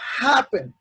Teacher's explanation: esta palabra, donde se enfatiza la pronunciación, es en la primera sílaba